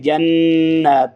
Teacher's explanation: अन्ना लहुम जन्नत, ये वही इदगाम उसी तरह है, यानी जन्नत नहीं पढ़ना बल्कि जन्नत, थोड़ा सा गुन्ना भी इख्फा भी करेंगे